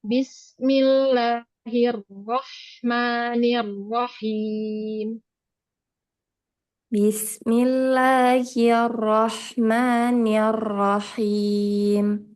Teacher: Jangan hir, nir, jangan dipanjangkan.